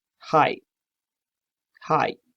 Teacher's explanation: it is voiceless, it's fricative, and you have to use your larynx. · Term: glottal